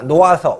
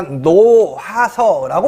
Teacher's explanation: 자, 모음으로 시작되는 어미입니다, 여러분. 그런데 얘는 자, 연음이 되는 게 아니고요. 히읗 탈락이 이루어집니다. 놓아서, 우리가 노하서라고 발음하지 않죠.